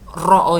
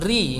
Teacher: Ro ini dibaca tebal, ri ini dibaca tipis.